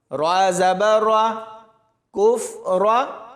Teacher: ہا کی آواز حلق سے نکلے گی اور با کے ساتھ ملاتے ہوئے سختی سے پڑھا جائے گا۔ اور آخر میں اس را کو موٹا پڑھیں گے۔